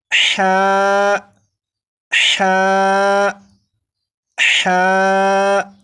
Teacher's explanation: ہا کو 1 الف کے برابر کھینچ کر پڑھیں گے، جیسے ہا ہا ہا، 4 مرتبہ پڑھے گا۔